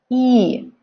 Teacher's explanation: So it's not really long actually, that's quite short, but like just make it like you're smiling.